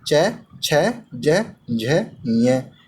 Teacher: इन सभी वर्णों का उच्चारण स्थान तालु होता है। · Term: तालव्य वर्ण